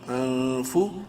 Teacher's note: اخفا کریں گے کیونکہ نون ساکن کے بعد فا حلقی میں سے نہیں ہے